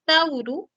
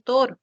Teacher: el diptongo Au pasó a ser el monoptongo o en el español